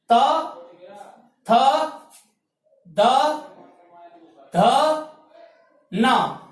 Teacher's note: चौथा वर्ग है त वर्ग। इसका उच्चारण स्थान है दंत स्थान।